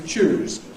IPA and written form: ʧuːz (choose)